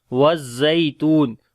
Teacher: سورۃ التین مکیہ، بسم اللہ الرحمن الرحیم، والتین والزیتون، والتین والزیتون، والتین یا یہاں پر مدہ ہے لمبا کریں گے، والزیتون اور زا کو تھوڑا سخت پڑھیں گے، یا یہاں دوسرا یا جو ہے یہ یہاں پر لین ہے، اس کو نرمی کے ساتھ پڑھیں گے